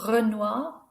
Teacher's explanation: the R is a rolled sound